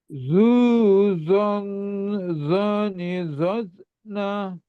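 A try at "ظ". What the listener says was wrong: Jadi mengalirnya suara itu yang kurang, mengangkatnya. Memang ini yang jadi tantangan itu mengangkatnya anak lidah, membuat suara tebal, terus dan mengalirnya suara atau rokowahnya itu yang lebih paling belum dapat tuh di situ ya.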